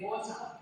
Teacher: especially because you might notice in American English, American people will pronounce the word water as water, and they say the air sound, the R sound. But in Australia, we say water. So we're not used to pronouncing the R sound.